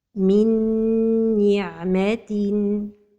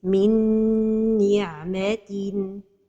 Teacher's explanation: The nun saakinah merges into the letter noon. In this case, the idgham is a complete idgham with ghunnah.